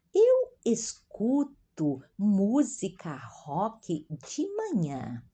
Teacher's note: uma S entre vogais, é como Z, a pronúncia da Z do inglês, né? Música rock de manhã, o R forte, novamente nasalizado.